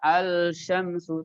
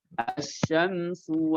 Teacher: sedangkan pada kata Syamsiyah itu lemnya diidghamkan